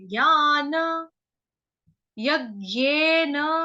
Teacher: य के ऊपर आघात आएगा आधे ग का, क्योंकि हम नॉर्थ इंडियन है, हम लोग ज्ञ बोलते हैं।